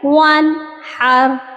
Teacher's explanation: ہم نے نون ساکن کی آواز کو بالکل صاف پڑھا ہے، یعنی آواز ناک میں نہیں چھپائی ہے بلکہ نون کا مخرج پراپر ادا کیا جاتا ہے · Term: اظہار